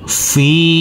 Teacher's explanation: karena bertemu dengan huruf Ya Sukun maka huruf Fa kita baca panjang dengan panjang dua harakat